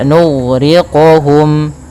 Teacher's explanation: huruf qaf termasuk huruf yang memantul, tapi perlu difahami pantulannya jangan sampai menjadi pantulan yang saktah ataupun ada pantulan tambah hamzah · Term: qalqalah